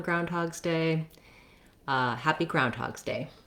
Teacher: day oh and also we have the first syllable stress so the main stress in groundhog's day the phrase is on the ground part